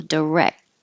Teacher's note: push your tongue against the roof of your mouth to make the T and just stop all the air flow · has to go up high for the K and stop the air flow direct and then you can push your tongue against the roof